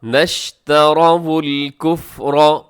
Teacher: نشترا میں جو ہے وہ را پر پڑھا جائے گا، باریک نہیں ہوگا کیونکہ را کے اوپر زبر ہے